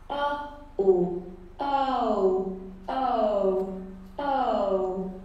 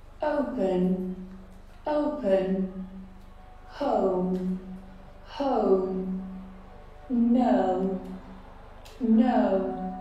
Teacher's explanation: Now this is a diphthong comprised of 2 vowel sounds put together in the same syllable. In this diphthong we have a schwa, and we need to transition to O.